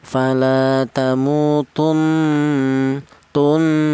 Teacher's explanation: Artinya ghunah itu ada suara berdengung. Panjangnya dengung yaitu dua harakat atau dua ketukan.